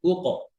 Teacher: উক এরকম ঠোঁট যেন গোল না হয়, কফের কফের সময় গোল না থাকে